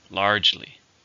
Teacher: how many syllables are in largely two syllables stress on the first